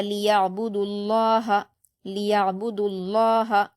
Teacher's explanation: با پر حرکت جلد پڑھیں گے، دال پر واو مدہ ہے، مگر واو مدہ کے بعد لفظ اللہ میں تشدید آئی ہے تو ہم دال کی حرکت کو لفظ اللہ کے لام کی تشدید سے ملا کر پڑھیں گے، اور یہاں پر لفظ اللہ سے پہلے پیش آیا ہے اس لیے اس کو پر پڑھا جائے گا